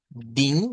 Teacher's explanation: ponemos una n porque eso trata de decirnos la nasalización de esa vocal